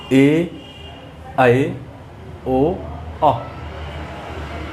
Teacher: ठीक है, तो इसमें आधा मुंह खुलेगा, मुख द्वार आधा खुले। उच्चारण के समय मुख द्वार आधा खुलता है। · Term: अर्ध विवृत स्वर